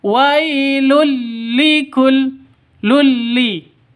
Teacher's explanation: lam ini e cara bacanya masuk ke lam diserta tanpa dengung masuk ke lam tanpa dengung Kenapa karena Idam Bila gunah masuk tanpa dengung tidak pakai dengung